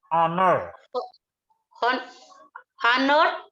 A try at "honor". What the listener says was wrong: Nggak, huruf H-nya nggak dibaca itu. Itu tulisannya memang ada huruf H-nya, tapi itu huruf H-nya nggak dibaca, bukan honor, tapi